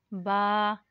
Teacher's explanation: बा दोनों होठों के हिस्से से अदा होता है